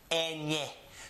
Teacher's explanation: It has a nasal sound. It's as if you're speaking through your nose. So it has this similar to an N, but it's more of an N and a Y combined together.